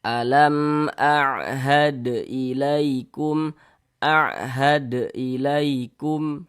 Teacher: dibaca jelas, tidak berdengung, baca pendek saja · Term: izhar syafawi